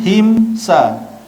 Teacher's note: Mim mati, ada tanda mati jumpa dengan huruf sin, izhar syafawi. Juga bacaan dia tidak dengung.